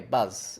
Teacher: the voice just continues into the beginning of the consonant but I don't need to hold it I can just cut it out straight away